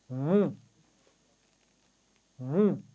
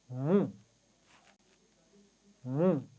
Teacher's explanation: हम अपने होठों को भी गोल करेंगे, मुंह मीम के मखरज पर मिलाएंगे और फिर होंठ गोल करते हुए पेश की आवाज़ निकालेंगे, मुंह मुंह। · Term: पेश के साथ मीम